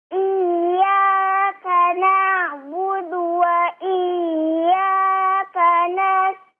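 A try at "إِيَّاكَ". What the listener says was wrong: Iyyaka ada hentakan di situ ditasydidkan ya. Dihentakkan. Iyyaka bukan cuman iyyaka ya. Bukan cuman malah kayak digunahkan yang singkat tidak ya. Tapi iyyaka ada hentakan. Dihentakkan ya kalau bahasa Selacau.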